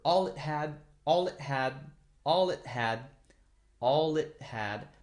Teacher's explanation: And all it had is really put together so that it sounds like one word.